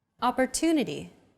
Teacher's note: stressed syllable 2 in opportunity is deemed more important so it's pronounced longer than all other syllables